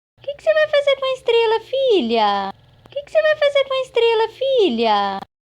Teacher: the fall spans 21 semitones, an octave and 9 semitones, from the very high WH word to the final low boundary tone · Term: falling WH question